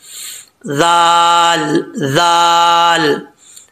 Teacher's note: जुबान की नोक ऊपर वाले दांतों के निचले हिस्से से लगे तो जाल पढ़ा जाता है बगैर सीटी के · زبان کی نوک اوپر والے دانتوں کے نچلے حصے سے لگے تو زال پڑھا جاتا ہے بغیر سیٹی کے